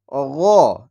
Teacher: হচ্ছে গলার শেষ প্রান্ত অর্থাৎ আমাদের জিহুব্বা যেখানে শেষ হয়েছে সেইখানে গলার শেষ এই জায়গা থেকে গইনের উচ্চারণ হয়